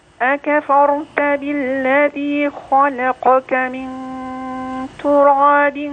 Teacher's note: التفخيم والترقيق في خلقك وكلمه تراب التاء ترقق الراء تفخم